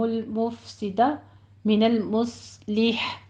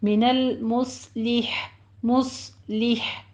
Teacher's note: صاد کو پر پڑھیں گے، آخر میں ہا کی باریک ساؤنڈ لانی ہے